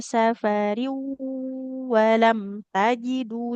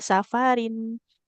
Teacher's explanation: Kalau tanwin bertemu waw, safariu. Langsung masuk ke huruf wawnya Ibu.